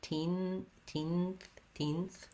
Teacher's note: You might find it hard to move from that N to the TH, and I think what we typically do in that case is that rather than lifting my tongue for the teen and then going to the TH, I lift into the TH position, I close off the air with my tongue further back on my tongue